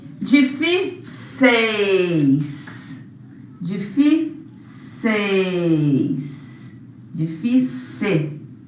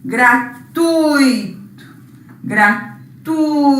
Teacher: nesses quatro casos nós tivemos ditongo decrescente porque a vogal ficou na frente da semivogal